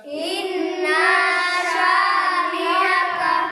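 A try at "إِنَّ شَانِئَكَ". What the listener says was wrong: ইন্না শানিআকা, না টান নেই, ইন্না শানিআকা,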